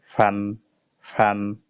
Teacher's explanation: ফার মাখরাজ হলো নিচের ঠোঁটের পেট উপরের সামনের দুই দাঁতের আগার সাথে লাগাইয়া